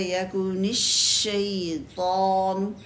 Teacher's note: شین مشدد ہے، یکن الشیطان، تو شین کو اچھا سا ٹائم دے، کلیئر آواز ہونی چاہیے